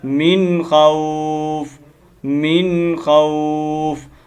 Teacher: من خوف पढ़ देते हैं मिन खौफिन, मिन खौफ, ये गलती है, इस गलती को आपने दुरुस्त करना है, आखिरी वाली हरकत को गिरा देना है